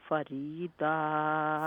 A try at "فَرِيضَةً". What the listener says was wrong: فرید نہیں داد لمبا تو نہیں ہے فریدہ.